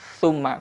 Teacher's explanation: tempelkan lidahnya ke gigi seri atas, maka terdengar su ya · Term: huruf tha